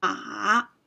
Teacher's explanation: So the third tone descends and then returns. It's a dipping or falling rising tone. Ma. So I went down to my lowest pitch and then rose a little bit.